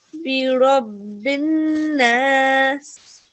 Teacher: you really gave the right sustained nasal sound here for a good 2 seconds